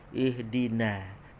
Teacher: Tapi ingat, huruf sad ini huruf itbaq, tebal. Tapi na ni jangan ditebalkan dulu. Jangan ihdinos.